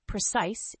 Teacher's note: the word precise has two syllables with the stress on the second syllable